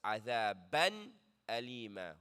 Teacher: And then we have tanween, adhaban, alima, followed by a hamza, which is the rule izhar. Make sure that the noon is clear. You don't hold on it. There's no ghunna. There's no ikhfa, just adhaban alima.